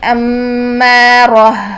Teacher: ہا ساکن میں سانس اور آواز جاری رہتی ہے